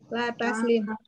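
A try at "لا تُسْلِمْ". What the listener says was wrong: awalnya domah jadi domah terus. Latuslim.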